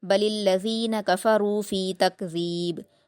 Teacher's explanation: کو پر پڑھیں گے اور دو حرکات کھینچیں گے، فی تکذیب، تکذیب میں ذال کے مخرج کو نرمی سے ادا کرنا ہے، با پر قلقلہ